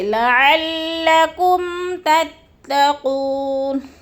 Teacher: لعلکم پہ غنہ نہیں کرنا کیونکہ اظہار ہو رہا ہے، جیسے لعلکم تتقون، قو کو پھر تھوڑا سا کھینچنا ہے کیونکہ